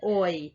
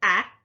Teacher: oy my mouth moves whereas when i say ah there's very little movement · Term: diphthong